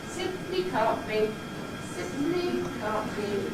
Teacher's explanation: you just jump down a little bit in pitch, ‘can’t be’, and then make it level again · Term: Stepping Head